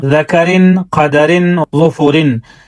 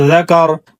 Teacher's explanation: را وصل کی صورت میں باریک اور وقف کی صورت میں پر پڑھا جاتا ہے